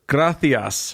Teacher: there's an S at the end but it's a th sound